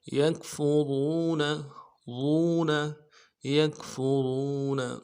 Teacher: را کو واو کے ساتھ ملانا ہے، را کو موٹا کریں گے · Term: واو ساکن